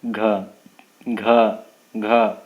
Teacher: इसमें कंठ से जो है आपका निकलता है घ।